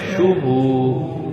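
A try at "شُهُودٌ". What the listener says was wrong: ہونٹوں کو اور زیادہ گول کرنا ہے شوبو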